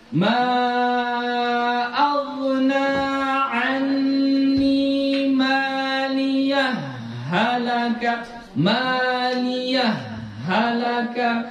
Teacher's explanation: jadi ha yang kedua di sini seolah-olah ada tasdid ya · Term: Idam mutamil